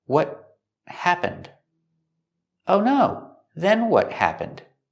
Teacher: The T at the end of what is a stop T, and it links to the next word.